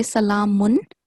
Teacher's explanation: So I think you are doing ikhfa here, but because we are reading in continuation, you have to say salamun, because the noon, this tanween is followed by ha.